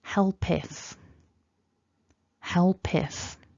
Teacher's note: help ends in that consonant sound and then we've got a vowel immediately afterwards and therefore we can sort of allow it to glide or smoothly move across